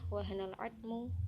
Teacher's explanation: jadi harus dibaca al, tidak dimasukkan ke dalam huruf ainnya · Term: al-qamariyah